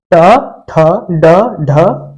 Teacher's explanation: ट वर्ग जो होता है वह मुर्धा से बोला जाता है